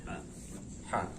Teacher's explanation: Dia dikeluarkan dari tengah-tengah tenggorokan. · Ha sifatnya hamas, artinya apa? Mengalirkan nafas. Ini ha besar.